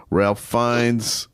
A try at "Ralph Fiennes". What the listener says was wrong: it's actually it's spelled Ralph, but it's actually pronounced Ray Fiennes.